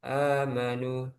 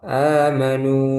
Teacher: Jadi jangan ditambah amanu. Nah, itu salah. Amanu tetap dua harakat. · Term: mad asli